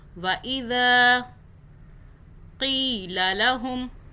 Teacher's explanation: ذال کو ہم نے کھینچا کیونکہ آگے الف ہے، ایک الف کے برابر